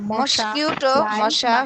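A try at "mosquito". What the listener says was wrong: এই জন্য মস্কিউটো বলে দিচ্ছেন, মস্কিউটো না, মস্কিটো।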